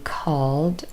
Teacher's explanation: the last sound for call is l. Again, very clear vibration, a voiced consonant. So all of those verbs end in a voiced sound in their infinitive form, and that means your vocal cords are vibrating, so we keep them on, and therefore the sound we say is d, because d is also voiced.